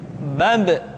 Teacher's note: Ketika mati, maka terdengar suara pantulan.